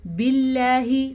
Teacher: لفظ اللہ کو ہم باریک پڑھیں گے کیونکہ با کے نیچے زیر ہے